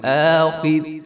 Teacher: خا موٹی ہوگی اور را کے نیچے کسرہ ہے تو یہ را بریک ہوگی